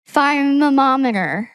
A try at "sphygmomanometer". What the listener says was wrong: The S is not silent.